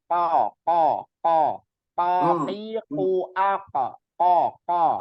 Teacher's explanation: huruf qaf itu makrotnya adanya di pangkal lidah bagian terdalam atau pangkal lidah.